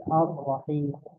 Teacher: perhatikan tadi arrahim ya arrahim ini kan alif lam syamsiah ya dia lam sukun ya bertemu dengan ro maka rnya ini ada tasdidnya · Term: Idam Kamil